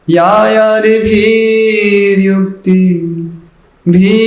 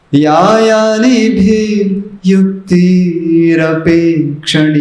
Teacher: भी को लंबा नहीं करना